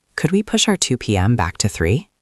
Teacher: Listen to how the words push and back sound strong.